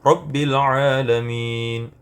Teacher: huruf ra pada kalimat Rabbi itu dibaca tebal karena berharakat fathah